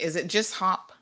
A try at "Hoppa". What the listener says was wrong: Most people think it's just Hop, but it's Hoppa. husband's German, so it's a German pronunciation.